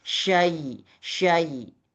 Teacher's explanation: Sya itu tafasyi. Jadi, desisnya itu lebih lebar ya. Lebih lebar menyebar.